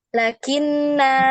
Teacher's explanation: ketika antuna waqaf di situ di kata lakinna ini maka antuna baca panjang ya, 2 ketukan. Lakinna gitu ya, 2 ketukan.